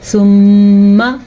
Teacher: میم کا غنہ ادا کرنا ہے کیونکہ میم کے اوپر شد ہے